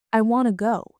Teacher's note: The stress is on want and go and to almost disappears.